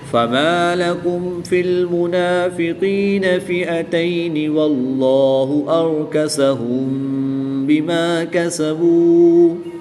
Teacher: میم ساکن کے بعد حرف با ہے تو یہاں پر اخفاء شفوی ہوگا، یعنی غنہ زمانی کر کے پڑھیں گے